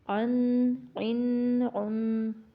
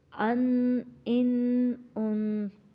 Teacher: اگر ہمارا عین ٹھیک نہ ہوا تو عین کی آواز اور حمزے کی آواز سیم آئے گی، تو اس لیے ہم نے ان کو الگ الگ ہی پڑھنا ہے۔